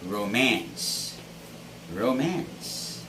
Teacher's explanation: stress our 13th word is this word it's romance romance so this word has the stress on the second syllable